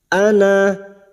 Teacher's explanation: Pada saat dibaca waqaf maka na kita panjangkan 2 harokat